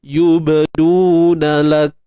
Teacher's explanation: Tahan suara lak, kemudian baru lepaskan nafas. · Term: syiddah dan hams